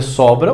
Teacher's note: Se você não nasalizar esse M, esse som de O, você tem a palavra sobra. · Esse M não teve uma pronúncia própria, ele só nasalizou a vogal anterior.